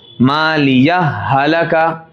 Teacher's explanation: ہا کے اوپر زبر ہے، ہا متحرک ہے، دونوں ہا جمع ہوئے، ادغام مثلین، دونوں حرف ایک ہوں